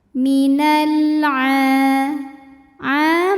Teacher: Karena alif lam menghadapi huruf qamariah yaitu ain, maka lam sukun dibunyikan dengan jelas atau dinamakan dengan izhar qamari.